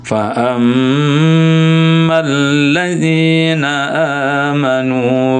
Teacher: Nah, ini yang tasdid ke huruf mim ini dengung.